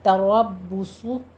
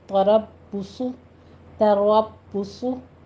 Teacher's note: شفی کریں گے، تربصو میں را کو پر پڑھیں گے اور با کے اوپر تشدید ادا کرتے ہوئے ہونٹوں کو گول کیجیے